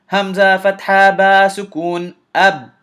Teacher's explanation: And because the sound just stopped, the articulation point just closed and the sound stopped. It's difficult for you to tell what I just said.